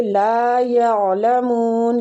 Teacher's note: لام کو کھینچیں گے الف مد کی وجہ سے